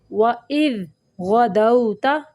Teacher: غین کو موٹا پڑھنا ہے